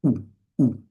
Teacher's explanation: The ooh is actually at the front of your mouth. It's a labial sound, a lip sound.